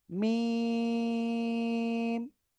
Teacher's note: মিম, চার আলিফ টান হবে